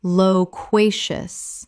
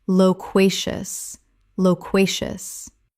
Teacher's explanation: Three syllables with the stress on the second, meaning very talkative.